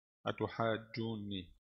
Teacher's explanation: Ya, jadi di sini ada 2 mad lazim. Alif dulu 6 harakat, kemudian waw 6 harakat, terus nun 2 harakat gunnah, kemudian ya mad tabi'i 2 harakat. Jadi jumlahnya 16 harakat.